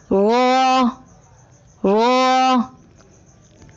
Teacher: را کی ادائیگی میں زبان کی نوک کی پشت کو اوپر والے دانتوں کے مسوڑوں سے لگا کر موٹی آواز میں پڑھیں، یعنی را۔ آئیے مشق کیجیے۔